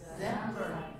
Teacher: The stress falls on the second syllable.